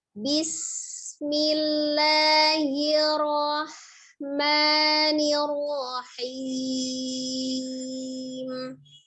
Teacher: alirkan sinnya, al-shafir, desis.